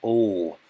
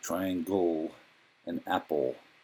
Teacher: The triangle is the dark L, ol, which you find at the end of words like triangle and apple.